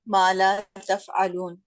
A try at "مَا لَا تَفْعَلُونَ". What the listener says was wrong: لا کو تھوڑا لمبا کرنا, ما کو بھی لمبا کرنا, لا کو بھی, ورنہ مطلب واضح نہیں ہوتا.